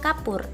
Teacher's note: vokal u tinggi bawah belakang bundar